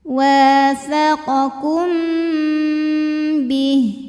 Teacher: Kemudian ada hukum ikhfa syafawi karena mim sukun menghadapi huruf ba, maka mim sukun dibaca dengung